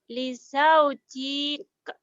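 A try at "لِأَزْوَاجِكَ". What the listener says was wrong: Pendek. Lizau jik. Kan gak ada madnya. Kenapa ini pendek? Karena ini linnya ketemu 2 huruf tuh. 2 huruf. Yang panjang itu kalau linnya ketemu 1 huruf nih. Lihat atas itu ya. Lin ketemu 1 huruf tuh.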